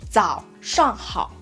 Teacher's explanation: we will be focused on the first beat falling tone and then try to ignore the second beat going up.